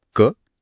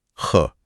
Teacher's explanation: क ख हां ख में हवा का एक पफ निकलता है। कम हवा मतलब अल्पप्राण ज्यादा हवा मतलब महाप्राण · आप क और ख बोलते हुए हाथ मुंह के आगे रखें, फर्क साफ पता चलेगा। अच्छा, तो क एक शांत ध्वनि है और ख में एक ह की ध्वनि जुड़ी हुई है।